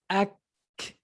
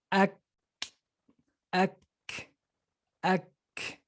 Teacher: even though the sound is stopped, but it does release air afterwards. So it's ak.